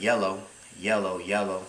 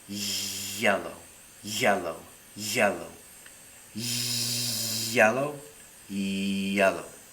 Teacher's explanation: we're getting rid of the friction or turbulent type sound and to do that we can reduce the air flow and